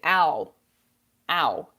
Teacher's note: in English, we would say ow, ow, and it's all through the mouth. Ow, like you can feel breath.